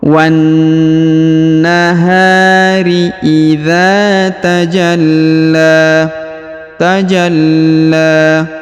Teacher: huruf ja langsung sambung ke huruf lam yang berharakat tasdid Ya ditahan dan ditekan lalu dipanjangkan dua harakat karena di atasnya terdapat Alif kecil dan di depannya terdapat alif